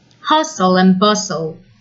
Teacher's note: Notice that letter T is silent. Hustle and bustle.